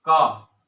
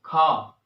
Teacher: कंठ से। जो का वर्ग है इसको हम कंठ से बोलते हैं